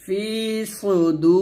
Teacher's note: সদ পেশ সু, সদটা মোটা হবে, ফি সু, দাল ওয়াও পেশ দু এক টান দিবেন।